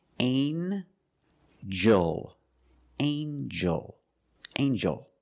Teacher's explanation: the G makes a J sound, like jump and juice. Together with the N, a regular N sound, not the nasal but the regular N.